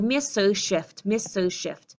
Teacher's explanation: you would have that H of her deleted and you'd hear miss her shift